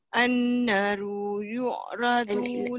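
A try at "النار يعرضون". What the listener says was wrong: An-naru, nah dia panjang sikit. Saya panjang sikit. Ah, panjang sikit.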